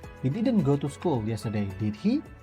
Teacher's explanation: ketika kita naikkan, maka kita tidak yakin kalau orang yang kita omongin itu pergi ke sekolah apa enggak kemarin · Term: raising intonation